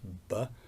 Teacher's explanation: So, for example, in the case of B, you can see my lips joined together, two lips, B, so the two lips come together and for a moment stop the air, B, and then it's released.